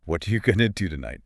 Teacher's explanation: What are you becomes whatcha, and going to becomes goa.